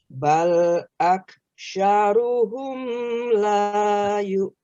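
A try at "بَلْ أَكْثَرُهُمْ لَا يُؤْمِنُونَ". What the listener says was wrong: Bal aktha, tha. Bal, bukan aksha, aktha.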